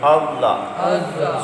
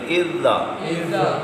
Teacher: زال کو نرمی سے ادا کرتے ہیں زبان کو اوپر کے دانتوں سے لگا کے